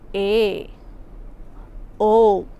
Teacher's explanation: નીચેના શબ્દોમાં એ અને ઓ પહોળો ઉચ્ચારાય છે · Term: વિવૃત એ અને ઓ